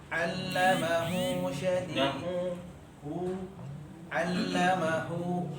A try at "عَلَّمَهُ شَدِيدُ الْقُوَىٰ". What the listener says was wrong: Nah, jangan ada tekanan, tapi relax, tapi keluar. Kalau tadi nggak ada tekanan, cuma nyangkut ke hidung dikit.